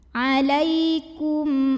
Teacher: huruf selain mim dan ba yaitu huruf hamzah maka cara membacanya mim sukun ini dibunyikan dengan jelas bunyi m nya tidak perlu kita tahan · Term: izhar syafawi